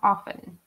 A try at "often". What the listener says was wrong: And I noticed you didn't pronounce the T. So you say often. It's completely fine to not pronounce the T or to pronounce it.